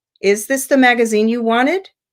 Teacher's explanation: Is this the magazine you wanted? And it would rise at the end, right? So the word wanted doesn't naturally have a falling or a rising tone. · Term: rising intonation